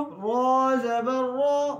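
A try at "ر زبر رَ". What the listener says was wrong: ہونٹ گول نہ ہو.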